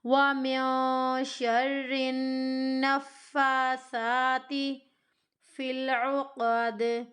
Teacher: فا کو اور سا کو ہمیں کھینچنا ہے کیونکہ دونوں کے اوپر کھڑی زبر کی حرکت ہے۔ تا متحرک ہے، تا کو بالکل بھی نہیں کھینچنا، لمبا نہیں کرنا۔